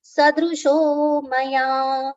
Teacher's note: Sadrusho and not sadrusho. There's no aghat on letter sa, so it should be short, soft pronunciation.